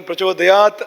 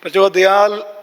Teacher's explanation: ತಕಾರ ಮತ್ತು ಲಕಾರ ಎರಡು ಕೂಡ ದಂತ್ಯ ಹಲ್ಲಿನಲ್ಲೇ ಹಲ್ಲಿನ ಬಿಡದಲ್ಲೇ ಉಚ್ಚಾರಣೆ ಆಗುವಂತದ್ದು · ನಮ್ಮ ಕೇರಳದಲ್ಲಿ ಸಾಮಾನ್ಯವಾಗಿ ತಕ್ಕೆ ಲವನ್ನ ಬಳಸುತ್ತಾರೆ ಸಂಸ್ಕೃತದ ತಕ ಕಾರಕಾರ ಬರುವಲ್ಲಿ ಲಕಾರವನ್ನು ಬಳಸುತ್ತಾರೆ ಈಗ ಉದಾಹರಣೆಗೆ ಪ್ರಚೋದಯಾತ್ ಅನ್ನುವಲ್ಲಿ ಪ್ರಚೋದಯಾಲ್